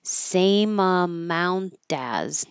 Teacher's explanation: This T is between two voiced sounds, so it will turn to a D.